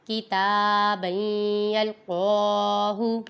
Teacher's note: یہاں پہ دیکھیں تا پہ کھڑی حرکات ہے، اسے لمبا کریں گے۔ اب یہ با پہ تنوین ہے اور تنوین کے بعد حروف یرملون میں سے یا آ رہا ہے، ادھر ادغام ہوگا، ادھر ہم غنہ کر کے پڑھیں گے۔